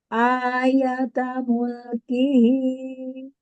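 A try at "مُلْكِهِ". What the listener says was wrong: Mulkihi. Jelaskan kasroh kaf.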